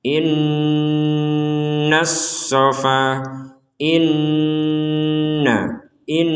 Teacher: ketika kita mengucapkan in, itu ada dengungan yang harus kita selipkan di rongga hidung kita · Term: nun bertasydid